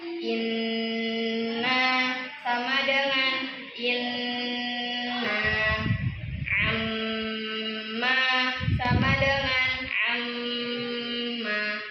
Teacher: Mendengungnya tiga. Kita makai tiga harakat. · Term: nun dan mim bertasdid